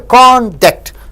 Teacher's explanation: So first syllable is stressed. · If you stress on con and stress less on duct, it means the character.